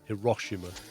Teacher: It's Hiroshima with emphasis on the second syllable.